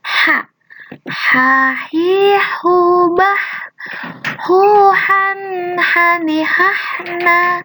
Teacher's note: H di sini adanya di tenggorokan dan itu diucapkannya sangat lembut. Tanpa ada desis atau desakan atau suara-suara yang tebal, tapi ini lembut. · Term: huruf H